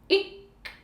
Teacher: நாக்கோட அடிப்பகுதியும் அன்னத்தோட அடிப்பகுதியும் சேர்ந்து இருக்கும்